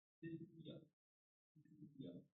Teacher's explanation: When first word ends with a consonant sound, any consonant sound, and second word is starting with sound yo, means palatal sound, right? So the terminating sound of the first word becomes palatalized sound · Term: Palatalization